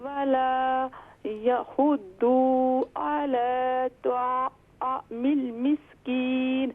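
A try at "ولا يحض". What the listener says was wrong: ولا یحض، یہ دیکھیں ضاد پر صرف ضمہ ہے تو اسے شارٹ ساؤنڈ کریں گے.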